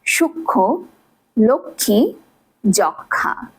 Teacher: যুক্ত বর্ণের সাথে ম ফলা যুক্ত থাকলে ম ফলার উচ্চারণ হয় না, অর্থাৎ সাইলেন্ট থাকে। কিন্তু ম যেহেতু একটি অনুনাসিক ধ্বনি, তাই যুক্ত বর্ণের শেষ বর্ণটিতে কিছুটা নাসিক্য প্রভাবিত হয়।